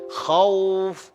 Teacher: Kalau orang yang belajar, dia kata khauf dengan KH. Khauf. Macam dia buat kahak.